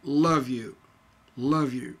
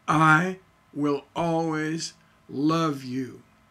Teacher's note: the last word you is unstressed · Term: feminine ending